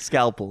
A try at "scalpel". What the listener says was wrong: Scalpel. Not quite. There's an L in there. A first L.